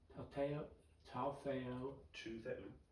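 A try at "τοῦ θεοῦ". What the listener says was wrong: To Theu. To Theu. Yeah, epsilon's hard. It doesn't make an A sound, it makes an E sound. Theu.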